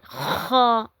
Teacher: خا بھی حروف حلقی میں سے ہے، حلق سے ادا ہوتا ہے اور یہ ادنائے حلق سے ادا ہوتا ہے۔ وہ حصہ جو حلق کا، گلے کا وہ حصہ جو منہ کے قریب ترین ہے، جہاں سے انسان کا منہ ختم ہوتا ہے اور وہاں سے حلق شروع ہوتا ہے، وہاں سے ہم ادا کرتے ہیں خا۔ · اس کو تھوڑا سختی سے ادا کرنا ہے، جیسے خراش کی آواز ہے